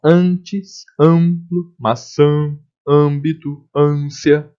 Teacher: Nas palavras que o A vão aparecer de forma nasalizada, aí sim eu vou representar com o tio.